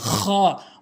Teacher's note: হলকের শেষ থেকে উচ্চারণ করতে হবে।